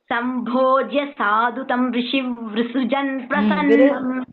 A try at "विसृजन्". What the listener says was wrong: विसृजन இல்ல, விசர்ஜன். there is no r in v.